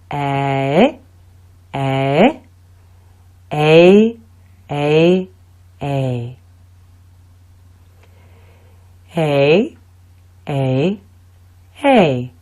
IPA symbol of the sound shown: ei